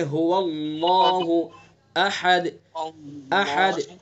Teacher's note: اللہ کے لام کو پر منہ بھر کے پڑھیں گے